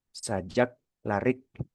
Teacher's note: Tapi kalau kanya huruf K itu mati, ternyata setelah huruf K itu konsonan lagi, atau memang huruf K itu sudah di akhir kata, maka huruf huruf K ini kita bisa rasakan tertahan kuat suara itu, suara konsonan itu tertahan kuat